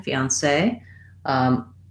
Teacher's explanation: so you can stress either the second or the third syllable